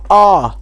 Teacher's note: जब आप बोलेंगे तो आपका जो मुंह है, ये मुख द्वार, ये आपका खुल जाएगा। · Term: विव्रत